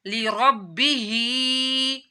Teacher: हा के नीचे खड़ा मादा है तो उसको लंबा करना है और रा को मोटा पढ़ना है, क्योंकि रा के ऊपर जबर आ रहा है, इस वजह से रा मोटा पढ़ा जाएगा।